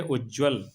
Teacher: यहां त है और त के बाद ज है इसलिए यहां पर ज हो गया है